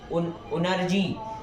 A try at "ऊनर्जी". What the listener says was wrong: ऊनर्जी, ऊ दीर्घ है ना?